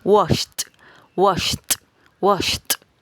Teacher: Por lo tanto, esta última sílaba la pronunciaríamos como una t. Es decir, omitimos la e y unimos los sonidos de la sh con la d. Pero esta d suena más fuerte, suena como una t.